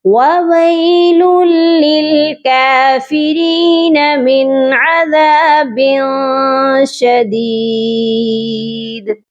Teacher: نون جو ہے ہم اس کو چھوڑ سکتے ہیں کیونکہ یہ آیت کے اینڈ پر ہے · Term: نون قطنی